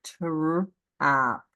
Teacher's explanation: We say it really quick. It almost sounds like a ch sound